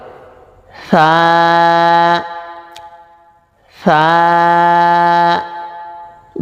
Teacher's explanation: জিহ্বার আগা সামনের উপরের দুই দাঁতের আগায় লাগবে, পাতলা আওয়াজ হবে, এক আলিফ পরিমাণ টান হবে।